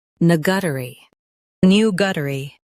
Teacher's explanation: new guh tuh ree new guh-tuh-ree new guh tuh ree new guh-tuh-ree In US, stress new. In UK, stress new and soften tuh-ree.